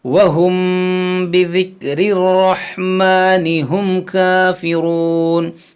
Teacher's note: یہاں پر آپ غور کریں میم ساکن کے بعد با ہے تو یہاں پر کیا ہوگا؟ اخفاء شفوی، یعنی یہاں پر بھی ہم غنہ کریں گے